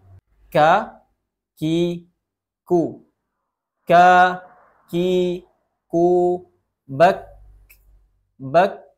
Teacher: Huruf kaf makhrajnya adalah atau tempat keluarnya di pangkal lidah mengarah ke langit-langit keras di atas makhrajnya huruf qof.